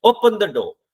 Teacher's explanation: अब ओपन तो आपने जोर से बोला, डोर तक आते हुए आपकी आवाज गिर चुकी है. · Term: फॉलिंग टोन